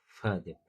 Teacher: Үстіңгі тісіміз астыңғы ернімізге тиеді.